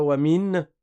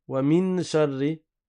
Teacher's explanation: on ne prononce pas le noun, la langue ne touche pas le palais